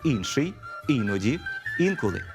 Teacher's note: звук і здебільшого вимовляємо чисто як звук і однак його наближення до звука и можливе при вимові слів інший іноді інколи звук і реалізується в таких варіантах як и